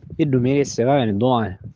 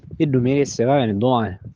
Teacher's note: In the Catania sample it sounds like lots of the initial consonants are elided, or at least not articulated very clearly.